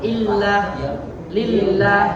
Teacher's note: lafzul jalalahnya dibaca tipis karena sebelumnya berharokat kasroh